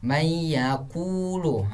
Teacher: Man yaqulu, huruf setelahnya huruf ya. Jadi man itu dihapuskan, huruf nun itu dihapuskan, dan setelahnya didengungkan. Cara mendengungkan sekitar 2 harokat. Mayyaqulu. Itu adalah nun mati bertemu sama huruf ya. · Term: idgham biguna